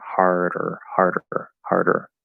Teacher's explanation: as you go from i you're immediately already closing into the er but then before you complete the er you can sort of tap and then pull into that completed or sound